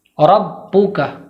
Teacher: با کو جماؤں کے ساتھ تھوڑی سختی کے ساتھ اور دیر کر کے ادا کریں گے۔ واضح طور پر با کو 2 بار پڑھیں گے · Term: تشدید